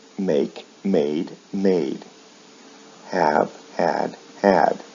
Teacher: With verbs like make, the vowel sounds remain the same in the past and past participle, but the final consonant sound is changed to a D